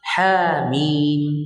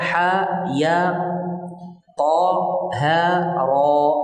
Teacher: Mad ini berada pada huruf muqatta'ah pada awal sebagian surat dalam Al-Qur'an. Cara membacanya dipanjangkan dua harakat. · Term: mad tabi'i al-harfi